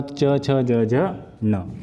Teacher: तालव्य से होगा च, छ, ज, झ, न